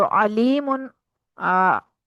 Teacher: अलीमुन आ, वस्ते हल्क से अदा होने वाला है ये हर्फ आइन